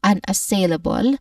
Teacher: The main stress is the third syllable sail. But we start with the first syllable un an which has you know a soft short weak a vowel sound here.